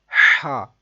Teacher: یہ ہا حلق کا درمیان والا جو حصہ ہے وہاں سے ادا کرتے ہیں۔